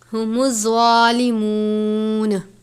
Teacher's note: زوا کو پر کر کے پڑھنا ہے، زوا حروف مستعلیہ میں سے ہے